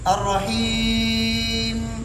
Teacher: الرحیم, دیکھو تھوڑا غنہ ہوا, میم واضح ہو گیا. اب غنہ نہ کر کے پڑھے الرحیم, با بنا.